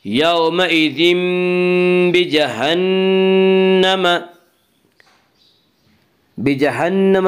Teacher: بجہنم نون مشدد غنہ ہوگا، غنہ کی مقدار 1 الف ہے۔